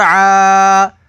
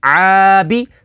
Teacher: عین کھڑا زبر آ، عین کے اوپر کھڑی حرکات ہے، کھڑی حرکات کو حروف مدہ کی طرح لمبا کر کے پڑھیں گے